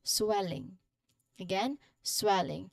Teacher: the first syllable here which is well that is our stressed syllable